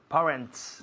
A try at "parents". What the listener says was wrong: no parents, sino parents. Un sonido vocal muy largo, parents.